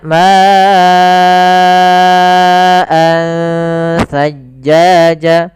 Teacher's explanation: ma-nya kita panjangkan sepanjang 4 harakat atau 5 harakat. Karena di sini kita namakan dengan mad wajib muttasil.